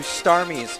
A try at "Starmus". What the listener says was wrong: First of all, it's pronounced Starmus, not Starmies. Like so many people like get my username wrong like that because they probably got it because it was originally based off like the Pokemon Starmie.